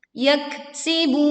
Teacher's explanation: kita menekan pada kaf sukun dengan disertai angin yang berhembus